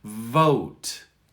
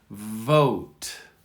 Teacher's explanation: Emphasize it a little bit extra. Sit on the V so they hear it longer and they understand what you mean. I'm going to suggest for those who really struggle with this sound to sit on it, emphasize it longer.